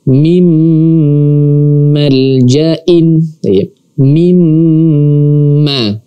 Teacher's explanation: di sini ada nun mati bertemu dengan huruf mim. Maka nun matinya di sini langsung kita masukkan ke mimnya.